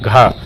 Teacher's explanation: घ जो है वो कंठ भी है महाप्राण भी है और घोष व्यंजन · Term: कंठ महाप्राण घोष व्यंजन